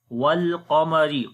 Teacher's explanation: Qaf we read in heavy sound. Ra we read in light sound due to kasra under it.